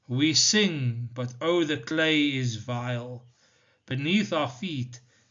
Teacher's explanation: It is written in iambic tetrameter, so it has unstressed and stressed syllables occurring 4 times in each line.